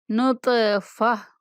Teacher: انذرنا، انزلنا، خلقنا، رفعنا، وضعنا، نطفة، تو آپ قلقلہ کریں گے، اور اگر تا کے اوپر وقف کریں، یہ جو گول تا ہوتی ہے اس کو وقف کی صورت میں ہا سے بدل دیں گے، اس کو تا نہیں پڑھیں گے، ہا پڑھیں گے۔ نطفہ، نطفت نہیں کہیں گے، نطفہ۔